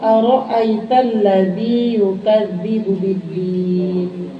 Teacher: Ra-nya tafkhim, artinya tafkhim itu dibacanya tebal. Jangan aro'ait, aro, berarti yang kedua, aro, bukan aro, harus tafkhim, tebal.